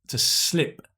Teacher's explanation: Notice the pronunciation, right? It's /ɪ/, not /iː/ right, to slip.